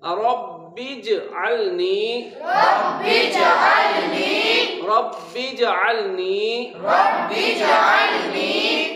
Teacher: جیم ساکن ہے، با کو جیم کے ساتھ ملانا ہے۔